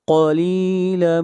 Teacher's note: قاف کو موٹا پڑھیں گے، قاف کو کاف نہیں پڑھنا، اگر قاف کو کاف پڑھیں گے تو یہ لحن جلی ہوگی اور یہ غلطی کرنا حرام ہے۔